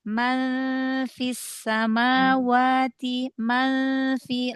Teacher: Ikhfa yang nun ketemu fa, udah di makhraj fa aja.